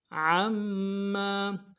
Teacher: عین کو موٹا کریں گے، میم کے ساتھ ملائیں گے، میم کے اوپر تشدید زور دیں گے ، اگلے میم کے ساتھ الف مدہ ہے، ایک الف دار